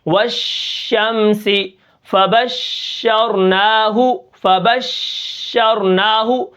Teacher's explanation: شین کی آواز دیکھیں منہ کے اندر پھیل جاتی ہے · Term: تفشی